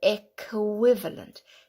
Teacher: the QI has that W sound, equivalent, with a K sound there too